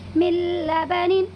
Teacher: ٹھیک ہے، یہاں پر بھی نون ساکن کے بعد یہ لام آیا ہوا ہے، اسی لیے اس میں بھی ادغام تام ہوگا اور نون ساکن کی آواز کو لام میں بدل دیں گے، مل بنن، تو اور بغیر کسی غننے کے اس کو ادا کریں گے۔